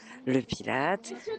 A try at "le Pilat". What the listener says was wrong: On ne prononce pas le T.